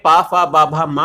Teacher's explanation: दोनों होठों के स्पर्श से बोले जाने वाले वर्ण ओष्ठ कहलाते हैं